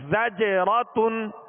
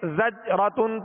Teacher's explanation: یہ جو آواز لوٹ رہی نا زج زج، یہ جنبش ہو رہی ہے آواز میں، زج جیم کی ادائیگی میں مخرج میں جنبش ہو رہی، جو آواز لوٹتی ہوئی آ رہی ہے اسے قلقلہ کہتے ہیں، زجرتن۔ اب اس کو اگر بغیر قلقلہ کے پڑھیں گے زجرتن تو جیم صحیح واضح ادا نہیں ہوگا